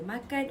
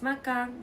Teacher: Terengganu people have a distinct dialect where they often add the ng sound at the end of certain word